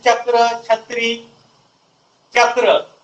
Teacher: यांचा उच्चार करता असता वेळेस जिभेचा तालूला स्पर्श करूनच होतो. जर तुम्ही दाताला स्पर्श करून जर उच्चार करतो म्हटला, त्यांचा उच्चार एक वेगळ्या स्वरूपाचा होतो. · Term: तालव्य वर्ण